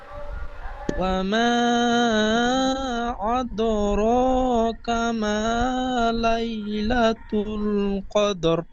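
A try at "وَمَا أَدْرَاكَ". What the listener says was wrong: এখানে এই হামজাটি আদ বলে ঠিক এমন আইনের মতো উচ্চারণ হয়ে গিয়েছে। হামসা, হামসা দাল জাবার আদা, আদ, ঠিক এমন বলবেন, আইনের মতো হবে না।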